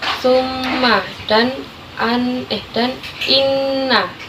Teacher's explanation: Yang ketiga ada gunah, itu nun bertasydid dan mim bertasydid yang dibaca 2 ketukan mendengung